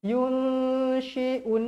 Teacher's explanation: Nun bertemu huruf shin. Wajib dengung dua harakat.